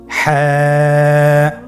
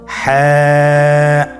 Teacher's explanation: হা হরফটি উচ্চারিত হবে কন্ঠনারীর মধ্যখান হতে। গলা চিপে ধরে আপনি উচ্চারণ করুন।